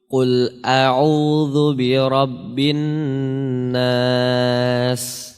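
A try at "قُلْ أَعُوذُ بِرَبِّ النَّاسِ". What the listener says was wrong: Ya bagus. Cuma sinnya harus dipelajari lagi.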